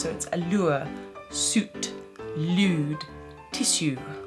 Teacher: the liquid you is so so so present in this accent but again the placement is more forward